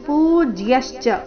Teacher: ಪೂ ದೀರ್ಘ ಬರಬೇಕು, ಪೂ ಮತ್ತೆ ಯ ಮೇಲೆ ಆಘಾತ ಸಹ ಬರಬೇಕು.